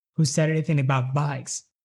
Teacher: Actually, the only word you can clearly hear is the word bikes, which of course is the pitched word. But the tone is always the same, very, very steady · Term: monotone